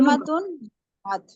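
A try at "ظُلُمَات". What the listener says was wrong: हाँ जुल्मा जो है ना, जुल्मा की जमा होगी जुलुमात। ठीक है, जुलुमात नाम पे पेश है।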